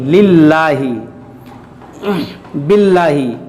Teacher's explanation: लाम से पहले लाम के नीचे ज़ेर है तो इसको बारीक पढ़ेंगे